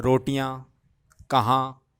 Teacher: अनुनासिक इसलिए क्योंकि इनको नाक और मुंह दोनों से ही बोला जाता है मतलब दोनों का प्रयोग करते हैं उनको बोलते हुए हैं है